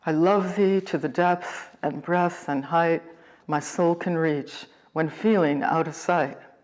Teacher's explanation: iambic pentameter and it is the expected beat for the sonnet five metrical feet each consisting of one unstressed syllable followed by one stressed syllable